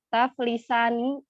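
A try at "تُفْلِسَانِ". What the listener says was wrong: Tadi udah doma semua. Tiba-tiba kok dia fathah.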